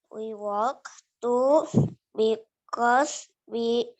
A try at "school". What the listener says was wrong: Schoolnya ketinggalan. We walk to school.